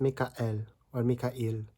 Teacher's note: And if you remember from the discussion of diphthongs, there is actually a glottal stop in between